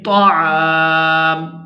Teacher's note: اگر ہم نے میم کے اوپر کرنا ہے وقف تو پھر ہم اس کو اس طرح سے پڑھیں گے طعام، یعنی اس میم کو ساکن کر دیں گے